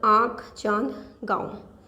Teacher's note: अनुनासिक की ध्वनि नाक और मुंह दोनों से निकलती है, दोनों से साथ साथ निकलती है।